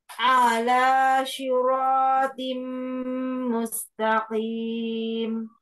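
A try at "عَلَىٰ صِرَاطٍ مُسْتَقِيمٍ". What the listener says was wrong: Ainnya jangan panjang. Ainnya pendek. Ala.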